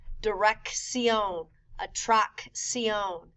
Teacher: A double C has two sounds. The first C sounds like a K. The second C sounds like an S.